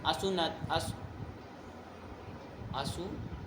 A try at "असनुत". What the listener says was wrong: सु कहाँ से हो गया? तुम्हारा तो वो उधर से उधर घूमता रहता है।